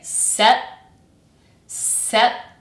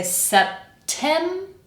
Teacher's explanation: I'm actually going to kind of hold the p. I'm not going to puff the air out. So I'm going to say se set.